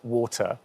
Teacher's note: I don't have the R at the end of that vowel. So I just come off of it